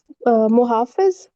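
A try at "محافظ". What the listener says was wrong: मुहाफिज। नहीं नहीं, महफूज नहीं होगा ना, अलिफ आ रहा है ना, मुहाफिज है। मुहाफिज है ये।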